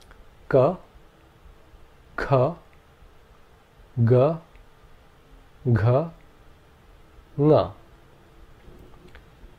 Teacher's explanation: The first group of consonants are gutturals, which means they come from the throat. The air is blocked by the tongue at the back of the throat until a vowel comes along and releases the air along with the sound.